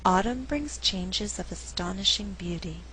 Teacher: The verb brings is not stressed because I want to create a good rhythm in the sentence. I alternate the stress, and what results is a rhythm like this: dun da dun, dun da dun, 1 and 2 and 3 and 4.